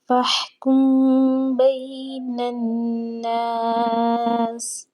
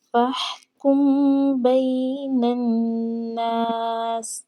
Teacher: اب یہاں پر دیکھیں میم ساکن کے بعد حرف با ہے، فَاحْكُم بَيْنَ النَّاسِ، یعنی کہ حرف با کے آ جانے سے یہاں پر اخفاء شفوی ہوگا۔ آواز جو ہے ہم نے چھپائے رکھنی ہے میم کی، ہم نے میم کو زیادہ ظاہر نہیں ہونے دینا، جیسے کہ فَاحْكُم بَيْنَ النَّاسِ، یوں اس طرح سے اخفاء شفوی کی ادائیگی ہوتی ہے۔